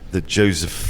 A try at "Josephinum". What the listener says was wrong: Yo. Yo. Not J, yeah. Josephinum.